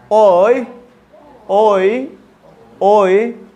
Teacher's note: छोटा ई है, ओ और छोटा ई एक साथ मिलकर ओय। भाई ई कहेंगे तो लंबा होगा ना, बड़ा ई हो जाएगा, ई।